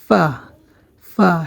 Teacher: উপরের দুই দাঁতের আগার সাথে নিচের ঠোঁটের পেট লেগে আমাদের উচ্চারণ হবে ফা সামনের উপরের দুই দাঁত নিচের ঠোঁটের এর পেটের সাথে লাগবে